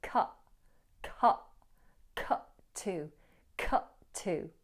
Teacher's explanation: You might be able to hear the hold or a glottal stop in cut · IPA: /kʌʔ/